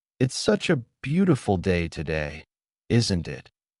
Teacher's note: the intonation rises at the end, making it sound like a friendly remark